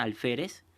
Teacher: Bien, si ustedes lo separan en sílabas, la palabra alférez, la sílaba tónica, que es fe, es la penúltima